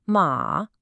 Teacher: Third tone the dip